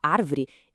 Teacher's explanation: a proparoxítona com a força na antipenúltima